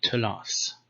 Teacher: So in Targumic Aramaic you say telath. So th became t, but it stayed th after vowels.